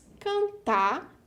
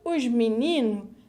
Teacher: In the cases where the syllable finishes with R and S, we sometimes suppress these consonants, such as the words cantar, that we pronounce without the final R, and os meninos, that we pronounce without the final S.